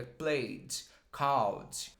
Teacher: a gente não pronuncia o e, a gente já vai direto para o d e fala ele bem levinho. Muita gente fala called, played, não é played, não é called, é played, called.